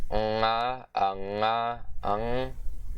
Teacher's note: it's also the voiced velar nasal consonant